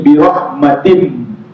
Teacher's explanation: kalau jumpa mim, nunnya hilang, masuk mim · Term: idgham